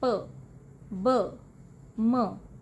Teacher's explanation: First ਹੈ ਆਪਣਾ ਬਾਇਲੇਬੀਅਲ sounds. ਬਾਇਲੇਬੀਅਲ sounds ਉਹ ਨੇ ਜਿੱਥੇ ਦੋਨੋਂ ਲਿਪਸ ਇੱਕ ਦੂਜੇ ਨੂੰ ਟੱਚ ਕਰਦੇ ਆ,